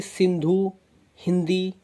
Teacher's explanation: उच्चारण होता है इनका नाक से, जैसे सिंधु, हिंदी, तो हमारी नाक से उच्चारण हो रहा है, इसलिए इन्हें बोलते हैं अनुस्वार।